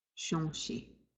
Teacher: Nasalizing the O again.